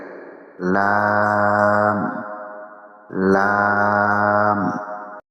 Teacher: জিহ্বার আগার কিনারা সামনের উপরের দাঁতের মাড়ির সঙ্গে লাগিয়ে